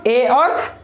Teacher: अब देखिए कंठ तालव्य स्वर, कंठ तालव्य स्वर कौन कौन, मतलब कंठ और तालु दोनों के हेल्प से निकलने वाली ध्वनि को कंठ तालव्य स्वर बोलते हैं।